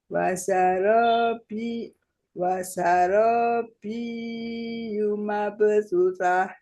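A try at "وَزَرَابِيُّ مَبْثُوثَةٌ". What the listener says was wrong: Biyu, jadi tidak panjang di B-nya. Langsung tekan, Bu. Wazarobiyumab.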